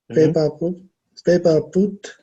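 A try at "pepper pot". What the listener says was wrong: No, I said this one is not paper, it's pay. It's like you're saying this.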